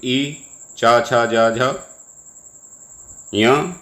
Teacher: ई च छ ज झ य और य और श, इनका उच्चारण स्थान तालु है